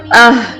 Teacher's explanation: حلق کے سب سے نیچے والے حصے سے ادا ہوتے ہیں جو ہمارے سینے کی طرف ہوتا ہے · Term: حروف ہلکیہ